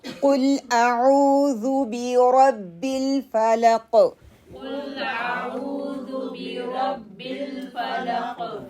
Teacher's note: را کے لیے آپ کی زبان موٹی ہوگی، اور قاف کے لیے قلقلہ بھی ہوگا ، اور اس کو موٹا بھی ہم انشاءاللہ تعالیٰ پڑھیں گے۔